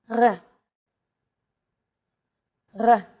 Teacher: It's pronounced at the back of the throat instead of forward in the mouth. · It's actually closer to the German or French R, but without the roll.